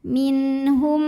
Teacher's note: nun sukun ketemu sama huruf halqi atau huruf tenggorokan yaitu ha maka Nun dibaca dengan jelas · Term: izhar halqi